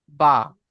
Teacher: দুই ঠোঁটের ভিজে অংশ হইতে বা উচ্চারিত হয় বা। ঠিক আছে, এখানে শুকনো আছে, এটা শুকনো হবে না, এটা মানে ভিজে হবে।